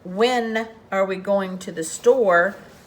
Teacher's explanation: you pronounce the W but you do not pronounce the H